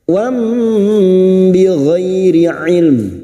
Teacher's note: Nun sukun atau tanwin yang bertemu dengan huruf ba namanya bacaan iqlab, membalik atau menukar. Membalik seperti bertemu mim namun siap membunyikan huruf ba. Mendengung selama 3 harakat.